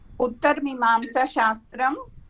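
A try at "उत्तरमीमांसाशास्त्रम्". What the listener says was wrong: Mimamsa Shastram. Dirgha is there. Uttara Mimamsa Shastram.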